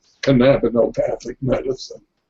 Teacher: The trick is to put the emphasis on the second syllable.